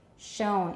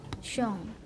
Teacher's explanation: there's labialization, but don't round too much.